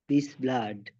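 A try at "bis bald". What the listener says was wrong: ব্লাড না, বাল্ড, BALD, বাল্ড।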